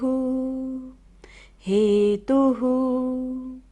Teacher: विसर्ग है तो हमें सारा सांस बाहर छोड़ना है।